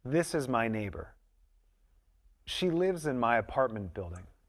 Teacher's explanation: the sound s or z links to the next word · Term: linking with s and z, linking